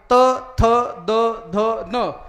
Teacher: नळाचा उच्चार करत असताना जीभ दाताला लागल्याशिवाय नळाचा उच्चार होत नाही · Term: दंतेवर्ण